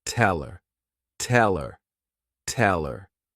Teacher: when these words go unstressed people tend to just omit the letter H and the sound that it corresponds to · we don't have tell and we don't have her we have one word tell her